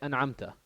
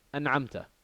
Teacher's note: There's no ghunna, there's no joining, there's no idgham, there's no assimilation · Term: izhar